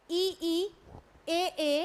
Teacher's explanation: ऐसे स्वर जिनका उच्चारण जीभ के अग्रभाग से किया जाता है उन्हें अग्र स्वर कहते हैं।